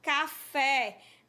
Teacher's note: café a sílaba fé você pronuncia ela com mais tonicidade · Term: oxítona, palavra oxítona